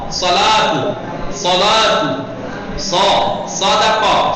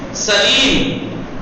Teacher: صاد کا مخرج وہی جو ہمارا سین کا مخرج ہے